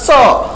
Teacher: जीभ जो हमारी जीभ है दांत में सटती है